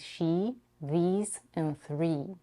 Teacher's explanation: we have the tense e vowel and she these and three